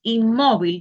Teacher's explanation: Entonces, aquí usted va a poner porque la sílaba tónica O sea, la sílaba tónica es donde se hace la mayor fuerza, porque la sílaba tónica es la penúltima sílaba